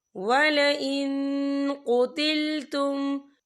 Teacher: وَلَئِن قُتِلْتُمْ، یہاں دیکھیں وَلَئِن، یہاں نون ساکن ہے، نون ساکن کے بعد جو ہے قوف آ رہا ہے، اور قوف جو ہے اکفا کا ورڈ ہے، تو ہم یہاں اکفا کریں گے، نون ساکن کی آواز کو ناک میں چھپائیں گے